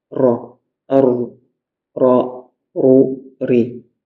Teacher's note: c'est-à-dire le bout de la langue, tu l'enroules vers l'intérieur et ben là ça c'est le point de sortie de la lettre R. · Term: bout de la langue enroulé